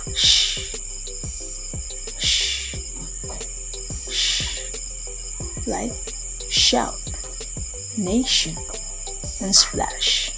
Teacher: Sound produced with the blade of the tongue approaching the hard palate.